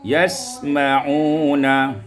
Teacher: Kemudian pada ayat yang ke-8 yasammauna, iskan sin, disukunkan sin, wa takhfifil mim, dan dibuang tasdid pada mim itu, ya, sehingga kita membaca yasma'una.